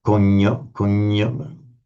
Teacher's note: there's that gna that becomes a kind of a nya sound in Italian.